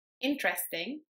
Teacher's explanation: When I say the English word interesting, I emphasize the first syllable more than the second and the third one. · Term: word stress